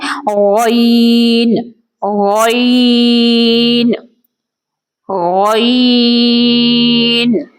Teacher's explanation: حرف غین کا مخرج ادنا حلق ہے. غین اور خا ایک ہی جگہ سے ادا ہوتے ہیں.